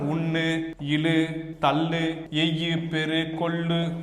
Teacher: சொல்லின் கடைசில வந்துச்சு அப்படின்னா என்ன ஆகும் தன் ஒரு மாத்திரையிலேயே உகரமானது முழுமையாக ஒலிக்கும் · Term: முற்றிய லுகரம்